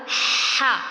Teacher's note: اس میں واضح طور پر سانس باہر آتا ہے